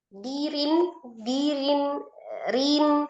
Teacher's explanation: rnya kasrah tanwin dibacanya tipis